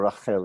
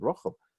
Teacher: if you're going to hear it in Ashkenazi pronunciation, you'd already hear this as an O. Remember we learned that this kamatz vowel is probably originally an O.